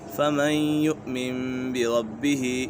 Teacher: را اور لا میں بغیر غنہ باقی چار حروف یا واو میم نون میں غنہ ہوگا تو یہاں غنہ ہوگا، نون ساکن کے بعد یا آ گئی ہے تو یہاں غنہ ہوگا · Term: ادغام یرملون